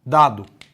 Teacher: isso inclusive é uma constante que interrompe a passagem do ar oclusivo portanto língua dental porque ela encosta nos dentes